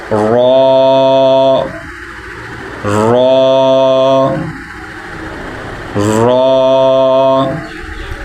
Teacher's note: زال زال زال، یعنی نرم آواز سے، اور را کو ہم پر پڑھیں گے، اور ہونٹ جو ہیں وہ آپ کے گول نہیں ہونے چاہیے